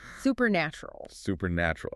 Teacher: The stress falls on the nat part.